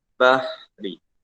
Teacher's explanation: Ada hamas. Dan dia ada syiddah tak? Tak ada syiddah. Dia terlepas nafas.